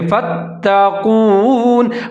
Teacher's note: اب یہاں پر حمزہ اور جا ان کو ملا کے پڑھیں گے، کیونکہ جا کے اوپر تشدید ہے، ادغام کریں گے، مضبوطی کے ساتھ ظاہر کر کے پڑھیں گے وإجاجا وإجاجا فتقون، فا کے اوپر زبر ہے، آگے تا کے اوپر تشدید ہے تو فا تا ملا کے پڑھیں گے اور مضبوطی کے ساتھ پڑھیں گے فتقون، قاف موٹے والا ہے، اس کو موٹا کر کے پڑھنا ہے فتقون۔